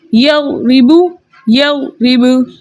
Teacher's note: अब बा के हालत वक्फ में बा का पेश हज़फ हो जाएगा, कलमे का आखिरी हर्फ यानी कि बा साकिन हो जाएगा और वक्फ बन जाएगा वक्फ बिल इस्कान। हालत वक्फ में हम बा के कलकले को बरकरार रखेंगे